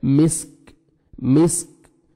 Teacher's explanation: ختامہ مسک. کاف ہے, کاف کو باریک پڑھ کے لائٹ سے ساؤنڈ آئے گا جب آپ نے سٹاپ کرنا ہے